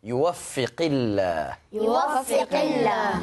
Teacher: qaf di dalam ya, makhrajnya di pangkal lidah